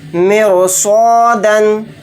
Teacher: یہاں پر رائے ساکنہ سے پہلے زیر ہے تو اس را کو باریک پڑھنا چاہیے تھا، لیکن یہاں پر بھی را کو باریک نہیں پڑھیں گے کیونکہ رائے ساکنہ کے فوراً بعد اسی کلمے میں صاد آ گیا، اور صاد حروف مستعلیہ کے 7 حروف میں سے ایک حرف ہے، تو اس لیے اس رائے ساکنہ کو موٹا یعنی پر پڑھیں گے۔